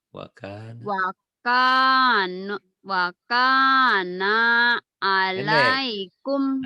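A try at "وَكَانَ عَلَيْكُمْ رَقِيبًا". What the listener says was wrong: Hanya nggak ada pemanjangnya, jangan dipanjangin.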